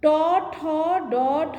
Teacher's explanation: মূর্ধন্য বর্ণ, মূর্ধন্য মানে মূর্ধা, মূর্ধায় লেগে উচ্চারণ হচ্ছে তাই মূর্ধন্য